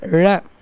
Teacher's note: நாவின் நுனி மேல் நோக்கி வளைந்து வருடுவதால் ழகரம் தோன்றும்.